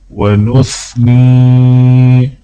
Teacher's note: نون کو جب یا کے ساتھ ملائیں گے تو ایک الف کے برابر کھینچیں گے